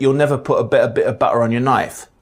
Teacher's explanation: T between vowels and at the ends of words is famously rendered as a glottal stop,